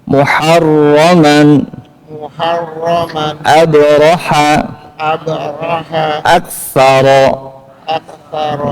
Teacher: ya itu kondisi ro dibaca tafkhim tebal ro ucapkan muharroman muharroman fokus ke rnya ya jangan ada getar sedikit hilangkan